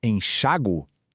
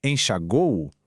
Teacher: a primeira pronúncia, com a força no A